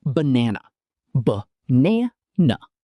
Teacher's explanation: Words like banana, ba-na-na. The first and last vowels are both schwa sounds.